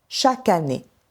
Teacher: le K de chaque migre vers le mot année. Et on entend chaque année. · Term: enchaînements consonantiques